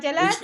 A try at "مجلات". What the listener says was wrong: مجلات. There is شدة or lam but they didn't put it. مجلة.